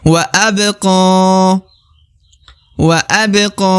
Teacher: huruf qaf yang di ujung adalah huruf yang harus dibaca 2 harokat